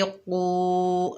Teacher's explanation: آگے واو ساکن ہے، قاف کو واو ساکنہ سے ملائیں گے، قاف حروف مستعلیٰ میں سے ہے اور واو مدہ ہے تو ایک الف کی مقدار کھینچ کر پڑھیں گے